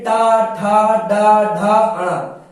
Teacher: टा ठा डा ढा, है ना, इसमें आपकी जीभ मुड़ी इसीलिए मूर्धन्य हो गया।